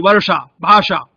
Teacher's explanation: और ठीक उसके पीछे जो मूर्धा है, जब हम श का प्रयोग करते हैं जैसे वर्षा, भाषा, तो जीभ बिल्कुल जो मूर्धा है माने तालु का सबसे गहरा भाग है वहां जीभ स्पर्श करती है, तब वो श का उच्चारण वहां से होता है।